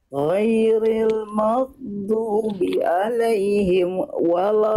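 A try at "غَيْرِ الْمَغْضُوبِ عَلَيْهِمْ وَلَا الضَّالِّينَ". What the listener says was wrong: Nah, jangan berhenti alaihim ke wawnya, jangan di alaihim wala. Emnya nggak boleh terputus. Mim punya sifat tawasud. Ghairil maghdubi alaihim waladdo. Alaihim waladdo. Jangan alaihim waladdo. Jangan berhenti emnya.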